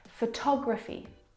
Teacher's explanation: photography you can hear the pronunciation is different and that's because the second syllable is the stressed syllable in this word photography